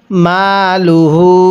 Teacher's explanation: দেখুন, হায়ে জমিরের উপরে যদি এরকম চিকন চিহ্ন, এরপরে যদি এরকম লম্বা হামজা থাকে তাহলে ওই হায়ে জমিরটি 3 আলিফ টেনে পড়তে হয়।